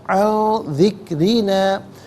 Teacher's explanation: اخفا کہتے ہیں ناک میں آواز لے جا کر گنگنانا. ذکری میں را کے نیچے زیر را کو باریک کر کے پڑھا جائے گا